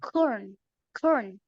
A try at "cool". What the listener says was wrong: Okay, so you don't say core. That's letter R. You're gonna say cool.